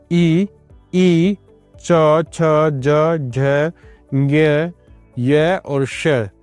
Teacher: इनका उच्चारण जो है वह तालव्य के द्वारा किया जाता है।